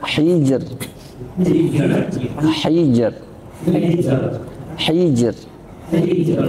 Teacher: Hijr di sini tipis karena sebelumnya kasrah. Sebelum huruf sukunnya kasrah.